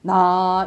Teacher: 점이 없으면 평성이면서 낮은 소리입니다